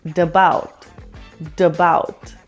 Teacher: Also, notice that the final T in forget is pronounced with the flap T sound, duh, which then connects with the vowel in about. So it sounds like dabout, dabout.